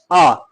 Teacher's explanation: मध्य स्वर की श्रेणी पर आता है। आ के उच्चारण में जीभ का मध्य भाग यानी कि केंद्रीय स्थिति में रहता है।